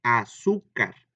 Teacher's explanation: Su, dos, car, tres sílabas. Y car es la última sílaba, ahí no lleva acento. Su es la penúltima sílaba, por eso es grave.